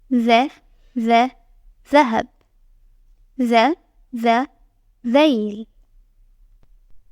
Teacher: the tip of your tongue is between your teeth when you pronounce it.